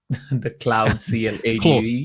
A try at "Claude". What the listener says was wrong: Claude rather than cloud.